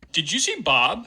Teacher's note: we get some palatalization of this D at the end of the word did. Because there's phonemically, we can presume there's a yod that follows it for you at the beginning of the next word.